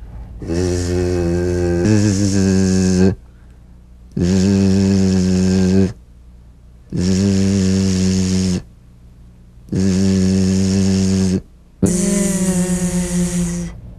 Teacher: feel a smooth, strong vibration in the teeth and in the front of the tongue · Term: Z sound